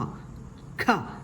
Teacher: ഈ ഒരു അക്ഷരത്തിൽ ക എന്ന വ്യഞ്ജനാക്ഷരത്തോടൊപ്പം ഹ എന്ന ശബ്ദമാണ് കേൾക്കേണ്ടത്. ക പ്ലസ് ഹ, ഖ.